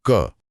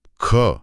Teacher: ख बोलने पर तो हवा का एक पूरा झोंका हाथ पे लगा। यही है अल्पप्राण यानी कम हवा और महाप्राण यानी ज्यादा हवा का फर्क।